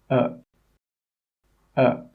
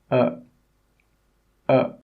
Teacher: here it comes from the very middle of the mouth uh when you say this sound your tongue is not high it's not low it's not forward and it's not back it's right in the middle of your mouth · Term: schwa sound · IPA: ə